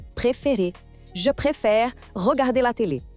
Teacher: o som do E em préfère, que é um som aberto